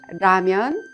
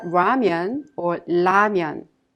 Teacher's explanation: you can consider it a sound in between the L Sound and the r sound